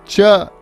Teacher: च जो वर्ग हो गया वो आवाज को आधा छोड़ता है, एफ्रिकेट जिसे हम बोलते हैं